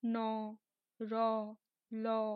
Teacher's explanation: যখন জিহ্বা দন্ত মূলে গিয়ে স্পর্শ করে